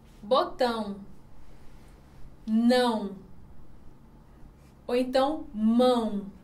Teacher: é como se a gente estivesse falando com a ajuda do nosso nariz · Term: som nasal